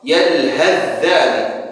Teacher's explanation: Kita idghamkan secara sempurna ke huruf dzal.